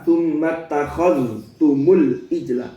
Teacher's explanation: zal ketemu ta, bukan idgham